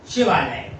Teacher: तो शिवालय को जब आप उच्चरित कर रहे तो बड़े आ पे बलाघात हो रहा है, शिवा बड़ा आ।